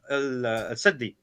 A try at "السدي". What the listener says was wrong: Again, here he mispronounces the scholar. Is not as-saddi, it's as-suddi, which tells me the ignorance here, because if he knew...